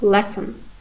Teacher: s is voiceless sound and n sonorant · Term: complete reduction